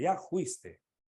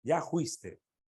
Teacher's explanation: la selva por ejemplo se ve mucho que la f lo usan con la J